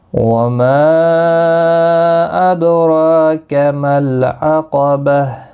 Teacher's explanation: ما مد منفصل ہے، 3 الف کی مقدار کے برابر کھینچ کر پڑھیں گے